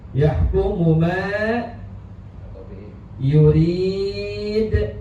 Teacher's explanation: harus jelas suara hak yang keluar dari tengah-tengah tenggorokan. Haknya hak yang posisi sedang mati, sedang sukun. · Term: Izhar mutlak